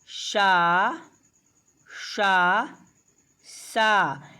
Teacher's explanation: एक है तालव्य सा, एक है मूर्धन्य सा और एक है दंत सा